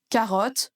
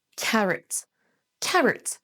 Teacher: Ce son O ici c'est un son schwa et ça se prononce carrot.